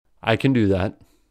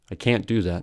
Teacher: in other words can is Khan but can't is can secondly there is no break between can and the following verb but there is a break with can't since ta is held